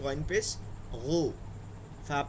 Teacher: গইনটা হয় হলক মানে কণ্ঠনালী গলার মধ্যে মুখের কাছাকাছি ওখান থেকে উচ্চারিত হবে